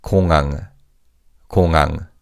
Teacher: in fast speech, the 히읗 in the second syllable is virtually silent.